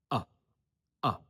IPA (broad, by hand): ə